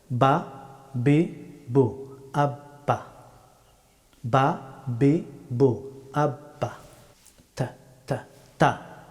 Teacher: উচ্চারিত হয় দুই ঠোঁট বন্ধ করে ঠোঁটের দুইটা অংশ থেকে বা হরফটি উচ্চারিত হয়